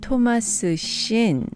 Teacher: Here we can contract 토마스 씨는 to 토마스 신.